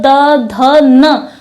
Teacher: द ध न तो हम पाएंगे कि हमारी जो जीव है वो हमारे ऊपरी जबड़े के दांतों को अंदर से स्पर्श कर रही है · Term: दंत्य वर्ग